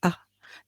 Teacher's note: when you pronounce ah you feel that the tongue is raised in the center of the mouth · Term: central vowel